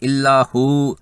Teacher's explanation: مثلا الا ہوا، اس پر اگر رکتے ہیں تو یہ واو کی زبر جزم میں بدل جائے گی اور ہو جائے گا الا ہو، یہ واو مدہ بن جائے گا اور مد اصلی ہوگی، اس کو 2 حرکات لمبا کرنا ہوگا